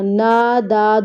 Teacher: یہاں پہ ہماری غلطی ہوتی ہے، اذ نداہ، نداہ نہیں پڑھنا، نادا دونوں کو برابر پہ کھینچنا ہے، کیونکہ یہاں پہ حروف مد ہے اور یہاں پہ کھڑی زبر کی حرکت، اور یہاں پہ آواز آتی ہے او، او نہیں ہے یہ لفظ، یہ ہا ہے تو ہو کی آواز آئے گی۔